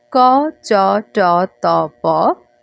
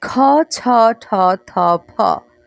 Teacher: মানে যখন আপনি উচ্চারণ করছেন তখন মুখ থেকে বাতাসের পরিমাণ কম বের হচ্ছে। আর মহাপ্রাণ ধ্বনিগুলোর ক্ষেত্রে মুখ থেকে বের হওয়া বাতাসের পরিমাণ বেশি থাকছে।